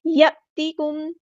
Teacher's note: ساکن پر ٹائم نہیں دینا، اظہار شفوی ہو رہا ہے، یاتیکم، حمزہ ساکن کی آواز کو جھٹکے کے ساتھ ادا کرنا ہے · میم ساکن پر ٹائم نہیں دینا، اظہار شفوی ہو رہا ہے